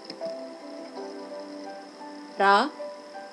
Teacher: راء مخففة تميل إلى اللام